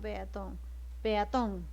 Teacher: Lo que significa que la mayor fuerza de voz está en ton. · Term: sílaba tónica